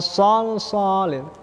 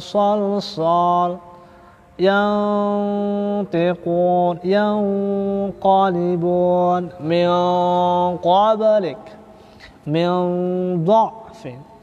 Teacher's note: Maka dengungnya adalah dibaca tafkhim, tebal. Ya, gunahnya dengungnya mempunyai tempo tafkhim, ya, tebal.